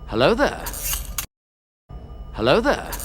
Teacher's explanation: this is a non-rhotic realization of the word. So no rhoticity here, it's hello there and not hello there.